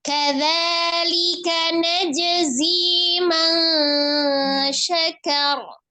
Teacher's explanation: Ikhfa, kemudian ro-nya disukunkan karena wakaf dan sebelumnya adalah fathah di huruf kaf, maka ro-nya dibaca tebal.